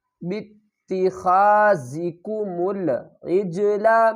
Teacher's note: با کو تا سے ملائیں گے، الف کو نہیں پڑھیں گے سختی کے ساتھ۔ خا کو ہم حرف کے اوپر والے حصے سے ادا کریں گے۔